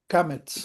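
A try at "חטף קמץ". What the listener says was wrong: No, it's not a come-H. It looks like a come-H. But there's one other vowel that looks like a come-H, but it's not a come-H. It's the one I get mixed up with the Hatef vowels, or Hatef Segols, Hatef Shavas.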